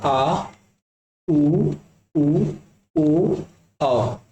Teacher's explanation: जीभ के पिछले भाग से इनका उच्चारण होता है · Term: पश्च स्वर